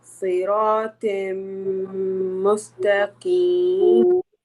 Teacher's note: there is a tanween followed by meme, and meme one of the yarmalun letters, idgham letters. So we need to merge the tanween into meme.